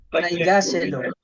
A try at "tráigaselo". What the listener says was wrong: tráigaselo. Tráigaselo. May acento na yun, ha? Tráigaselo. Kasi traiga. So, tráigaselo.